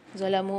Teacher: واو کے اوپر مد آ رہا ہے، 3 سے 4 الف میں دار کھینچ کے پڑھیں گے